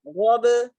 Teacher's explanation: Gho itu di pangkal lidah ya, atau tenggorokan yang agak ke atas dia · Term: ghain